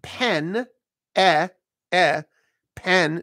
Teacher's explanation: notice I'm really not shaping that vowel it's a flat vowel